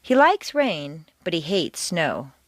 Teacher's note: Like and hate are contrasted and are the stronger words in the sentence.